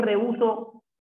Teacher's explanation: ¿Y por qué? Porque hay la unión de una vocal abierta y una vocal cerrada, pero la vocal cerrada lleva tilde, o sea que es un hiato acentual